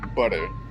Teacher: We actually do have the tapped R in English. We just write it as a D.